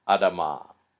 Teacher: But when we add on a suffix, in this case an a suffix, which is a feminine suffix, the first vowel changes, so it becomes much shorter. So this word is pronounced Adama, not Adama.